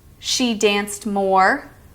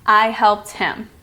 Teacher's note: Next up is the ED sound pronounced as a T sound after unvoiced consonants